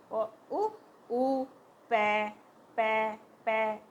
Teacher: हमारे दोनों लिप्स जो है वो पास में आ रहे हैं पै बोल रहे हैं तब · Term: ओष्ठ